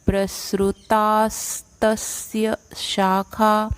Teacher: त के ऊपर आघात है ये, और इसलिए अगला जो वर्ण है आधा स और त उससे जोड़ के बोलेंगे